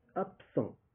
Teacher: le B qui va changer, il va devenir P